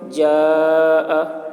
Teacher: اس سے یہ فَإِذَا جَاءَتِ الطَّامَّةُ الْكُبْرَى، جیم یہ الف حرف مد کے بعد حمزہ اسی کلمہ میں ہے، اس لیے مد متصل ہوا۔ مد متصل کو 3 یا 4 الف کے برابر کھینچ کر پڑھیں گے۔ جاء طامہ، اس میں الف حرف مد ہے، حرف مد کے بعد والا حرف میم ہے جس پر تشدید ہے، تو حرف مد کے بعد والے حرف پر تشدید ہے، اس لیے مد لازم کلمی مثقل ہوا۔